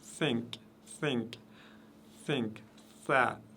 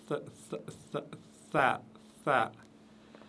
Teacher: on a l'impression qu'il y a un S et un T qui se mélangent.